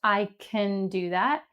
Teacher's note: You can hear that the word can is unstressed.